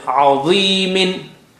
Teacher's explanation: Dha is very thick and high sounding. The kasra brings the effect down, but still is there.